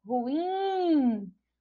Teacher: E ruim, ruim não tem acento, mas quando a gente pronuncia, ó, ruim, a gente identifica que a sílaba tônica é a sílaba in, que é a última sílaba e que não recebe acento porque termina em in.